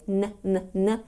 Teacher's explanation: the NG sound in Jordy tends to become an N sound made with the front of the tongue